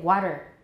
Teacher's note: Taps in which the tongue makes a single tap against the alveolar ridge